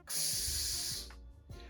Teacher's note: pronounced as x, like as if you're putting a K sound and an S sound together, like so. A K and an S sound make the X sound.